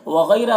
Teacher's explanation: غین کو پر پڑھیں گے، حروف مستعلیہ میں سے ہے